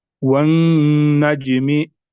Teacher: जब नून मुशद्दद होगा तो इसमें गुन्ना करेंगे, नाक में आवाज निकालनी है एक अलिफ के बराबर। और साथ में ये क्या है यहाँ पर, जीम साकिन है, تو जब हरूफ कलकला साकिन होंगे तो इनमें कलकला होगा, यानी आवाज वापस लौटेगी।